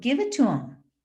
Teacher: I don't even pronounce the TH in them.